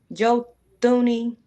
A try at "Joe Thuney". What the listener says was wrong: I think he pronounces it Tooney. I think the H is like silent.